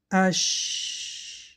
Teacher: وقتی که ما حرف‌های حمز را تلفظ می‌کنیم، این تارها کشوده می‌شوند و هوا برآمدن می‌گیرد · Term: حمس